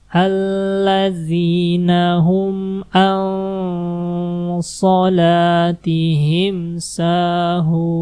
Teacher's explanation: Ada 1 yang ditahan, yaitu nun ketemu sok, ikhfa nih. Disamarkan.